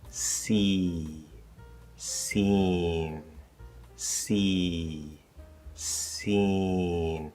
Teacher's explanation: the vowel before M or N will actually be a little colored or very slightly nasalized before M and N, because as we are preparing to create that M or N sound, the velum loosens, and so it doesn't completely open.